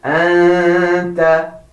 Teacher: you have to say half noon and half ta by not pressing your teeth like so. Anta. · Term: ikhfa